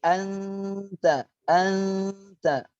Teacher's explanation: penyebutan yang benar adalah nun sukun, samar-samar persiapan masuk ke huruf selanjutnya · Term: ikhfa